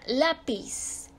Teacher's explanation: izquierda penúltima sílaba por ejemplo la palabra lápiz se acentúa porque su sílaba tónica está en la penúltima sílaba · su sílaba tónica está en la penúltima sílaba, termina en Z, que no es ni N ni S ni vocal, por lo tanto se acentúa.